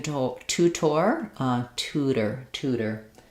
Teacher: of two different types of T sound in our word so the initial T is a released T sound and then this one is flapped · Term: flap sound